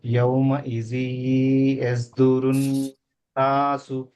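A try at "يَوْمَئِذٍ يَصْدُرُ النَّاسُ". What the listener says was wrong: Very good.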